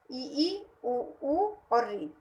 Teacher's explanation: संवृत स्वर होते हैं उसके बोलने में मुख बहुत ही कम खुलता है।